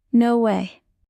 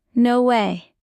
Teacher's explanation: Stretch the vowel for emotion. Pronunciation tip: raise your pitch on way. It gives energy and excitement.